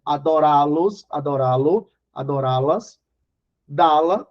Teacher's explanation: Porque a sílaba tônica é a última. Seguida de pronomes clíticos. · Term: oxítonas